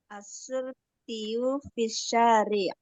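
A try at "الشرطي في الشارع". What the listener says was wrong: Asyurtiyu fisyari. Nggak boleh disukun. Saya mau dihidupin harokat akhirnya. Syari'i, syari'ah, syari'u. Harokat akhirnya harus dihidupkan. Fisyari'i.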